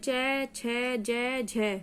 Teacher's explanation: स्पर्श संघर्षी व्यंजन कहलाते हैं, क्योंकि इनके उच्चारण में जीवाग्र और कठोर तालु के मध्य स्पर्श और संघर्ष होता है।